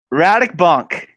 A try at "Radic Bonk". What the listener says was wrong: Ah, you nailed it.